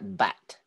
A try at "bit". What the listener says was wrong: Okay, but this one is bit, not bet. Bit.